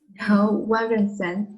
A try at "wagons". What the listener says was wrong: Wagons and often were. It's faster. Please do not separate it like this.